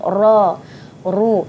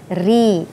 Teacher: bila baris atas dan baris hadapan kita sebut ra, ru, tapi baris bawah dia jadi nipis